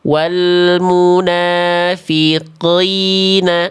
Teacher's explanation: Tafkhim nisbi huruf qaf itu dia berkurang kadar tebal atau melemah kadar tebalnya ketika qafnya berharokat kasroh. Jadi nggak perlu sampai kayak tadi.